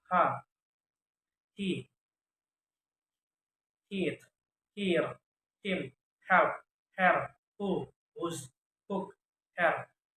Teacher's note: Voiceless glottal fricative sound ha, he, heat